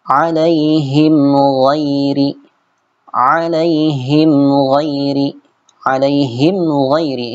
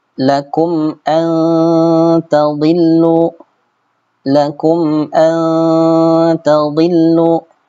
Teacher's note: Mimnya jelas, mim sukunnya dibaca jelas dan tidak diikhfakan maupun diidghamkan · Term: izhar syafawi